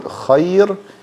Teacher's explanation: This is called maddim. Like when I say the word khayr, I didn't do exactly 1 haraka on the ya. It's a little bit more. Anyway, just say 1 haraka and you're good.